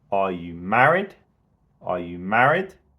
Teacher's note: we can really emphasize the rise in intonation on the the word married and we go quick over are you